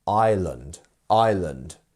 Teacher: we actually just miss out that S entirely